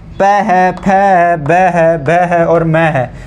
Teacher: जो प वर्ग है उनका उच्चारण करेंगे तो होठों से होगा उनका उच्चारण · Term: औष्ठ्य